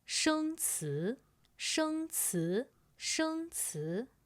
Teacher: 生 词 first tone and second tone.